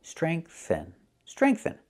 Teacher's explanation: Use the th with no voice like think and thank you.